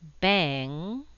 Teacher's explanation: The NG sound is made with the back of the tongue pressed against the roof of the mouth in the middle back of the palate.